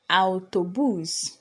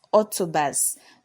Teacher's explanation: So the A and the U are pronounced separately, not O as we have in English.